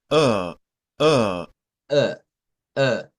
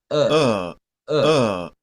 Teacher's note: Ese es un sonido como solo pujar, ¿verdad? Sin mover la lengua. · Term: sonido schwa